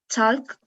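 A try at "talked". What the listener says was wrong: Talk, it sounds a little bit like only present as only base form.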